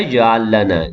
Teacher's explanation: Jim yang sukun itu qalqalah sughra, berdetak kecil.